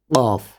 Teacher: جہاں پہ آپ کا قوا ہے وہاں سے زبان اور قوے کو آپس میں آپ نے ملانا ہے تو یہ حرف جو ہے یہ ادا ہوگا قاف، ٹھیک ہے، اور اس کو بھی تھوڑا سا پر کر کے بولیں گے کیونکہ یہ پر حروف میں سے ہے، موٹے حروف میں سے۔